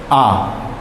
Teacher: केवल आ का उच्चारण होता है वो जिह्वा के मध्य भाग से होता है